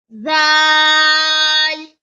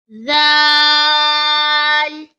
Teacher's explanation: Zal comes from tip of the tongue touches the edge of upper front teeth.